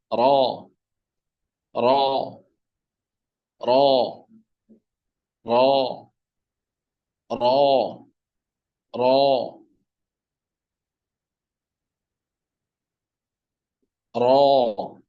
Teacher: কি বলে দাল না দাল দাল দাল র আওয়াজকে ভারী করে জিহ্বার অগ্রভাগ একটু ফোল্ড করে উপরের দাঁতের গোড়ায় মাড়িতে এখানে আওয়াজকে একটু কম কমন করে র র র র র